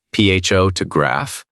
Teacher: In English, the stress falls on the first syllable